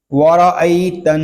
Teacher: نون مشدد ہے، اس کو شروع ہی سے غننے کے ساتھ پڑھیں گے۔